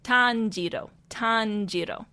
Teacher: they want you to sit on that ro sound a little bit longer.